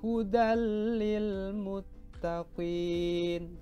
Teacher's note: Cara membacanya itu memasukkan tanwin ke dalam lam tetapi tanpa dengung.